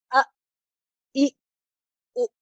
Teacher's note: حمزہ جب ساکن ہوگا اس کو آپ نے جھٹکا دینا ہوگا، ا، ای، او، ہلانا نہیں ہے، صرف جھٹکا دینا ہے۔ ساکن حمزہ یعنی آواز اس کے مخرج میں رکے گی، اسے ہلانا نہیں ہے، اور آواز کو روکنا بھی ایسے ہے کہ اس میں باقاعدہ جھٹکا محسوس ہو